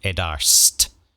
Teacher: it wasn't like a sh t sound it was actually more of a st sound